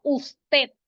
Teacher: Usted tiene el acento en la última sílaba. No está tildada, pero tiene su acento.